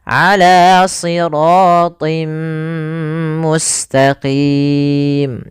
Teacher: Awalnya ala siratin, ketemu mim, tinnya hilang, masuk ke mim sehingga ditahan. Kemudian langkah yang kedua ditahan mimnya. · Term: idgham bi gunnah